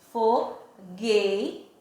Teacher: Mas aqui em fogueira, observe que eu tenho GU, tem uma consoante e uma vogal, mas ao pronunciar a palavra fogueira, eu não pronunciei o som do U